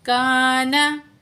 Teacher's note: الف مد ہے، دو الف کے برابر کھینچ کے پڑھیں گے